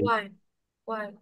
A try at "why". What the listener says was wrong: হুয়াই না, হুয়াই না। ওয়াই। ওয়াই।